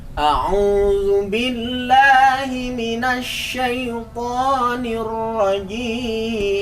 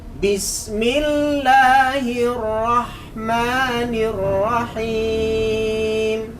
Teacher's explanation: Jadi yang pertama nada ini rendah, yang kedua tinggi. Maksudnya tinggi tidak terlalu tinggi, yang penting lebih tinggi dari yang pertama.